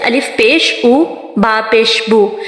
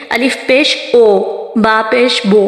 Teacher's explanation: ہمارے جو لپس کی پوزیشن ہوتی ہے وہ فلی سرکل ہو جاتی ہے. اگر تو آپ اپنے لپس کو فلی گول نہیں کریں گے تو آپ کی وائس آئے گی الف پیش او، با پیش بو، تو یہ والی جو وائس ہے وہ غلط ہے.